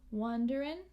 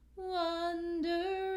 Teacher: it's common in music sometimes we drop this g sound